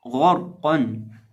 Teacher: اس کے اندر ہمارے پاس 3 حروف ہیں، غین، را اور قاف، اور ہم ان تینوں حروف کو موٹا پڑھیں گے، یعنی غین کو بھی موٹا پڑھیں گے، را کو بھی موٹا پڑھیں گے، اور قاف کو بھی موٹا پڑھیں گے۔